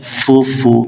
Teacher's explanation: পেশ উচ্চারণ করার সময় ঠোঁটগুলো গোল করতে হবে। ফু ফু। যখন আমরা টু বলি, যেমন টু টু টু বললে যেরকম ঠোঁট গোল করতে হয়, পেশ বলার সময় এভাবে গোল করতে হবে।